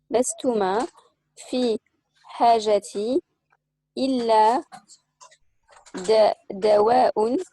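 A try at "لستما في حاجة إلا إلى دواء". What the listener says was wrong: إلى دواء. لستما في حاجة. حاجة. تنوين إن. حاجة. Non, دواء. Donc là, il y a un in ici. Et là, il y a un in ici aussi.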